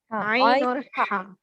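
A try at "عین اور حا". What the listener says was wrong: ہاں عین اور ہے, عین ہے, ہے اور ہا میں فرق ہونا چاہیے, ہے اور ہا میں فرق ہونا چاہیے. چھوٹی الگ ہے, بڑی ہا الگ ہے.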